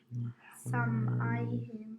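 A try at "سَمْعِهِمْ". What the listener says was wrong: No, I. Sam'ihim. You're saying I. It's ayn with a kasra is I. Try it. Say I. Similar to that, but with an ayn sound. Sam'ihim.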